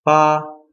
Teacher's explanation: high level pitch first tone